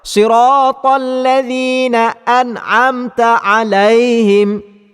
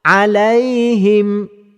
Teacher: huruf ya salah satu daripada huruf yang bersifat dengan lin, iaitu mesti dibaca dengan lembut. Bacaan akan dikira salah bila mana pembaca membaca dengan cara siratal ladzina an'amta alaihim, yang menekan pada kalimah alaihim.